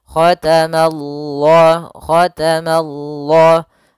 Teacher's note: Ma-nya tipis, Allah-nya tebal. Nah, maka dia baca dengan lam yang tebal. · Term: lafzul jalalah